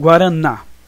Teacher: a última sílaba que é mais forte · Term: oxítonas